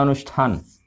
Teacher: स बदला मूर्धन्य श में, थ बदला ठ में।